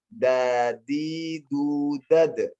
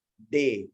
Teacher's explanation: Dal dalam bahasa Arab beda seperti dengan D bahasa Indonesia. Kalau D bahasa Indonesia dia lebih ke belakang. D. Kalau dal dalam bahasa Indonesia seperti orang celat.